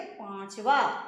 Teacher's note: अनुनासिक हमारा मुख और नाक से वो हवा निकल रही है